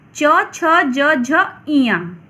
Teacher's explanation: इसे च वर्ग कहते हैं और इसका उच्चारण स्थान तालव्य है।